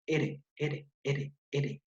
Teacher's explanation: la punta de la lengua vibración vibra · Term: vibrante múltiple